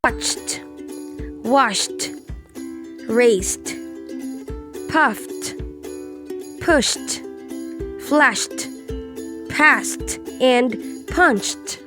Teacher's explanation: D is T after an unvoiced consonant sound